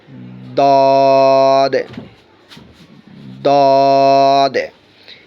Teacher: জিহ্বার গোড়ার কিনারা আর উপরের মারিদাতের, আপনি বিশেষ করে ডান সাইড থেকে বলতে সুবিধা হয়। জিহ্বার গোড়ার কিনারা উপরের মারিদাতের গোড়ার সঙ্গে লাগাইয়া দ, মোটা করে একটু ভারী